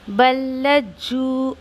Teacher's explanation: फिर यहाँ पर अक्सर गलती जो होती है पढ़ने में, देखिए कि लाम भी मुशद्दा है और जीम भी मुशद्दा है ना। जीम मुशद्दा लाम मुशद्दा दोनों की 2-2 दफ़ा आवाज़ आनी चाहिए